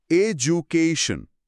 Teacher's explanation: কে অংশের ঠিক আগে স্ট্রেস মার্কটা দেওয়া আছে। এর মানে হলো আমাদের কে অংশটাতে জোর দিয়ে বলতে হবে